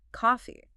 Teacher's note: Notice the soft f sound right in the middle resting on your bottom lip.